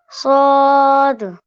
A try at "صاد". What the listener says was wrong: جی بالکل صحیح.